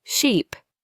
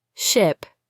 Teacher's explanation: It's all about vowel length and tension. In sheep, your tongue is higher and the sound is longer. With ship, it's quicker and a little lower.